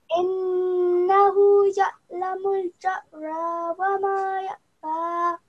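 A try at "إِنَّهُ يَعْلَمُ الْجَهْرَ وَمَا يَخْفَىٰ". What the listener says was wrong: Okay, so here you have again pronounced it like a hamza and like a hamza. But these are actually two different letters. They have nothing to do with hamza. Hamza sounds like alif, but this is a jim. It makes a j sound, like the letter J in English. This is the letter kha.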